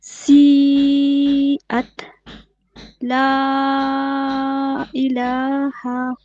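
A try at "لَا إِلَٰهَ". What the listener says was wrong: نہیں لا کو اتنا نہیں کھینچیں گے.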